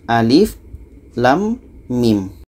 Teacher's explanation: Alif ini pendek saja, lam 6 harkat, mim 6 harkat. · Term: huruf fawatihus suwar